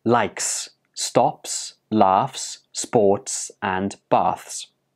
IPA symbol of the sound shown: s